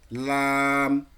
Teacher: জিহ্বার আগার কিনারা সামনের উপরে দুই দাঁতের গোড়ার সঙ্গে লাগিয়ে। · জিহ্বার আগার কিনারাটা দাঁতের গোড়ায় নিয়ে যান, লাম। লাম, হ্যাঁ, লাম, মাশাআল্লাহ।